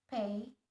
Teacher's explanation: consonant sounds produced by joining two lips together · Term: bilabial sounds